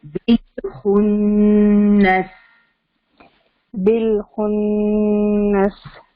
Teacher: Teeth کا back ہے وہاں پہ ٹپ آف دا ٹنگ ہوگی اور آواز ناک میں جا رہی ہے. ٹھیک ہے، تو غنہ کے ساتھ بالخنس.